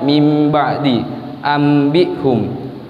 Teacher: Dan hukum nun mati dan tanwin yang ketiga adalah iqlab, yaitu ketika bertemu ba, maka membacanya berubah menjadi mim dengan mendengungkan serta dibaca dengan samar